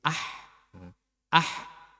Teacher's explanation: tapi agak untuk H itu berada di tengah tenggorokan Kemudian untuk Ha ini suaranya bersih jangan sampai keluar dengkur